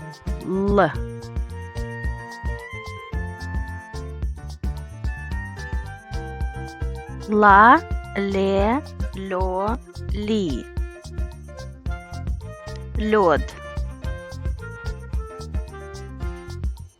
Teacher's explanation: The tip of the tongue rises to the roots of the upper teeth and to the beginning of the alveoli, touching them. The back of the tongue rises to the soft palate.